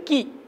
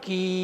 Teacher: கி அப்படிங்கும் பொழுது ஈங்கிற ஒலி இருக்கு, கீங்கும் பொழுது நெடிலான ஈங்கிறது இருக்கு